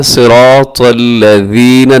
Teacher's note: نرمی کے ساتھ پڑھنا ہے، اور اس ذال میں سیٹی نہیں ہوتی